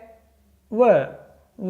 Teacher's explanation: आगे है व के लिए एक सूत्र था अकेले व के लिए वकारस्य दंतोष्ठम, इस तरह से आप याद रखेंगे वकारस्य दंतोष्ठम, तो व का उच्चारण स्थान क्या हो जाएगा दंतोष्ठ, यानी दांत और ओष्ठ।